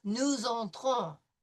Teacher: we have an O in front of an N, so it's going to be nasal